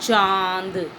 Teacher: अनुनासिक इसे नाक और मुंह दोनों से बोलते हैं इसमें उपरांत हिंदू का प्रयोग होता है अपने ऊपर चांद लगाया